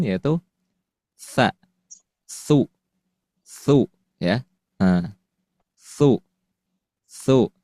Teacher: sa di sini bukan sin bukan sya ya tapi tsa · tsa yang di mana makhrajnya kita melafalkan dari ujung lidah yang bertemu dengan ujung gigi seri atas